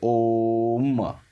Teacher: तो ओम को आप अच्छे से बोलोगे तो पूरा का पूरा ओ, फिर लास्ट में गिरोगे म पर, ठीक है, ओम, ठीक है। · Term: पुलुत स्वर